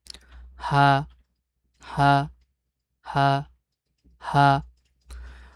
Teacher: তবে এইখানে একটু লক্ষ্য রাখতে হবে যে এই উচ্চারণটা হবে যে হালকের শুরু থেকে, কণ্ঠনালীর একদম গোড়া থেকে হা, হা, হা বা হা, হা এরকম যেন না হয়, বরং কণ্ঠনালীতে একটু খেয়াল করে আমরা এটা উচ্চারণ করব।